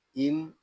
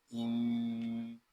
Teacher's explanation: آگے میم شدد ہے اور میم شدد میں ہمیشہ غنہ ہوتا ہے